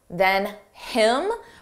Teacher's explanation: Notice how you don't hear the H on him, than him. But if we want to combine those sounds together and say it like one word, then him.